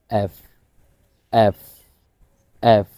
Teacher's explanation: এফ এফ এর উচ্চারণটা একটু ব্যতিক্রম যদি খেয়াল করেন দেখুন এই আমার এই ঠোঁট এ এবং হচ্ছে উপরের দাঁত এই দুইটা জিনিস আমি একসাথে লাগিয়ে উচ্চারণটা হালকাভাবে করতেছি